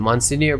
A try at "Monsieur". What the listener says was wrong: I think you just don't pronounce the N, like Monsieur. The N throws you for a loop.